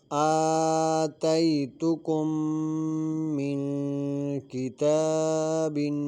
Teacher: من کتاب میں نون ساکن کے بعد حروف اخفا میں سے کاف آ رہا ہے تو غنہ کر کے پڑھیں گے